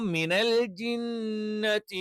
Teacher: ജ എന്ന് പറയുന്ന അക്ഷരം നാവിൻറെ മധ്യഭാഗം അതിൻറെ തൊട്ടുമുകളിലുള്ള അണ്ണാക്കിൽ ചേർത്തുവെച്ചുകൊണ്ടാണ് നമ്മൾ എന്ത് ചെയ്യുന്നത് ജ എന്ന് പറയുന്ന അക്ഷരം ഉച്ചരിക്കുന്നത് അപ്പൊ മിനൽ ജിന്നത്തി